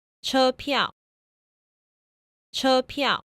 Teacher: notice that the fourth tone actually starts off higher than the first tone. So when you're pronouncing a 1-4 combination, make sure that when you start the fourth tone syllable, that your voice rises a little bit.